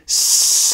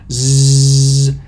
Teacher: S, and you can feel with your fingertips as you do that, the second sound source appearing at your glottis when you start to vibrate the vocal fold. So zzz, that's a voiced fricative that has two sound sources. And you can also kind of clearly hear the one at your alveolar ridge when you're producing even the voicing there, zzz.